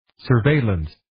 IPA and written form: sər'veɪləns (Surveillance)